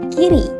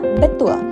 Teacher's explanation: rahang akan lebih tertutup saat mengucapkan vokal I dan sedikit lebih terbuka untuk vokal e · kata betul diucapkan dengan bibir dalam posisi Netral kedua posisi lidah untuk vokal I lidah Berada di posisi di bagian depan mulut untuk vokal e lidah sedikit lebih rendah di bagian depan mulut namun masih mendekati langit-langit ketiga posisi rahang rahang akan lebih tertutup